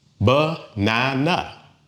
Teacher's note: It has 3 beats. Banana. And the stress usually falls on that middle one.